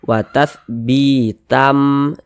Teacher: Jangan dibaca bitan, tan, jangan, tapi dirubah menjadi m, dirubah menjadi mim, melebur dia. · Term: idgham bi gunnah